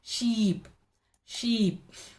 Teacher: wall symbol is this it represents long e sound the lips the tongue receives long tension long tightness and the lips are stretched · The tongue is in the front of the mouth. It has forward shift, a forward movement.